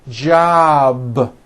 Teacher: job ends in a B, which is a voiced sound. Job. It's not jop with an unvoiced P. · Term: voiced B ending